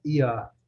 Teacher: No inglês britânico, você vê que o R não é pronunciado, né?